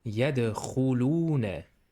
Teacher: Kha is a strong sound from the back of the throat. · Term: letter kha